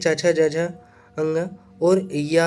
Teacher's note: च, छ, ज्ञ और य भी जो है तालव्य में आता है